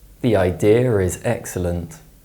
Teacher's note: when the ER sound is inserted to link words that don't contain the letter R it's known as the intrusive r